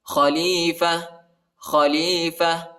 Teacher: وقف کی صورت میں تا کو ہا کے ساتھ تبدیل کرنا ہے